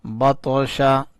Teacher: طا کے اوپر کلکلہ کیا، طا کو اٹھایا